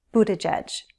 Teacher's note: There are 3 syllables, Buttigieg, stress on the first, which means the other 2 syllables have unstressed vowels